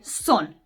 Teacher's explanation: But in genitive, right, in Interslavic we say sna. So we lose O and son becomes sna. So there is no more O.